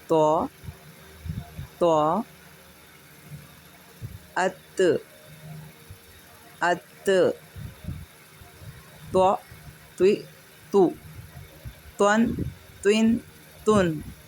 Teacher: اطباق کا مطلب ہے زبان کو اوپر کے تالو سے ملانا یا ڈھانکنا۔ تو حرف طوا ادا کرتے وقت زبان اوپر کے تالو کو ڈھانک لیتی ہے، جس کی وجہ سے حرف طوا کی آواز موٹی اور بھری ہوئی نکلتی ہے